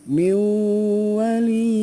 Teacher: Nah jadi ditahan dulu 2 harokat. Ingat ya, cara membaca idgham biguna itu ditahan dulu dengan dengung 2 harokat